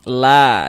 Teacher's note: Kalau di atasnya ada tanda seperti ini, dibaca panjang ya, sehingga la dibaca panjang. Mad tabi'i panjangnya 2 harokat